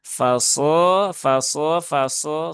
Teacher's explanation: Jadi yang berperan adalah pangkal lidah, bukan bibir. Huruf shad dia bukan huruf bibir, dia huruf lisan. Maka yang berperan adalah lisannya atau lidahnya.